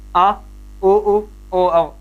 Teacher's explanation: इनका उच्चारण करने पर जो स्पर्श है वो कहां पर हो रहा है, जीवा के जड़ वाले भाग में ही कंपन हो रहा है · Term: पश्च स्वर